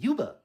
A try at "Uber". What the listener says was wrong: You're adding a Y. Say underwear.